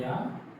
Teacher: या का उच्चारण स्थान होता है तालु